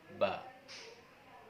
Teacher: Huruf ba dilafalkan dengan merapatkan kedua bibir, sama seperti melafalkan huruf B dalam bahasa Indonesia.